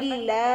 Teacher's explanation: لام کے اوپر کھڑی زبر ہے پتلا پڑھنا ہے اور تھوڑا سا لمبا کر کے پڑھنا ہے کیونکہ کھڑی زبر ہے ہا زیر ہی لا ہی اذا جاء